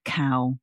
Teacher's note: I don't think of that as having a W at the end. There's one in the spelling but I I'm not saying cow.